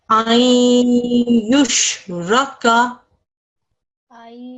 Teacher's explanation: 2-second nasalization where the sounds are merged. Okay, this alif with her fatha, this noon sakin and this ya mushaddad will merge and assimilate together to make this sound. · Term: Idgham naqis